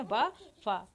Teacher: इन वर्णों के उच्चारण में ऊपर के दांत तथा नीचे के होंठ का प्रयोग किया जाता है। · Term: दंतोष्ठ